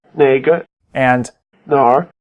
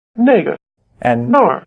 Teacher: As with the words for which and that, 哪个那个 the only difference between the word for where 哪儿 and there 那儿 is the tone. Notice that both question words, which and where, 哪个 and 哪儿 have the low tone, while that and there 那个 and 那儿 have the falling tone.